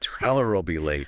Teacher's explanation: The L at the end of tell connects directly to her.